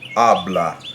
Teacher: One, that if you have a word that ends in N, S, or vowel, now that's typically a word where the natural stress, that is the most stressed syllable in the word, regardless of accent mark, that stress will end up on the second to last syllable of the word